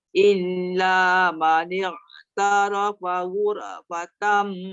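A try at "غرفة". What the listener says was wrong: Jaga ghura. Dia jangan ghura. Jangan dilepaskan begitu. Ghur. Ya, dia tebal tapi dia tak ada bunyi qalqalah.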